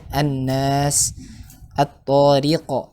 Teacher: di mana Asy-Syamsiyah ini diidghamkan, dimasukkan ke huruf setelahnya ya